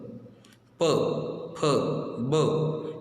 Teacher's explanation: ओष्ठ्य मतलब दोनों ओंठ एक दूसरे को चिपकते हैं